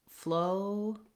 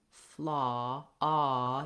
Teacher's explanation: ah is an open back, lax, rounded vowel. What that means is, I'm not saying an O here. · When I move from O to ah, my jaw is more open.